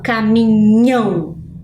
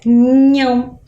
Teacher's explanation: o som mais forte agora quando eu falo caminhão está lá na última sílaba